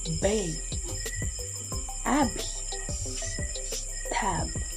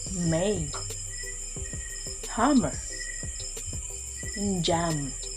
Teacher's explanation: in all these sounds both lips are coming together to create the sound